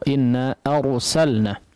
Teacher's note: adalah kondisi huruf ra dibaca tebal. Namun yang jadi perhatian kita ya biasanya adalah tegurannya di fathah huruf hamzah sebelumnya.